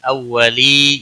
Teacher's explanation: اولی یا مدہ ہے ایک الف کے برابر کھینچ کر پڑھیں گے